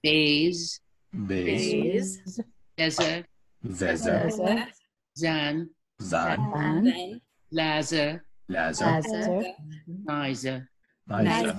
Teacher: Becomes a Z. So voice TH as in them becomes Z as in zoo. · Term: Voiced TH sound